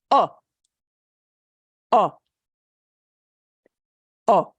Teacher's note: It's kind of like long O in English, but it's cut. It's cut much shorter.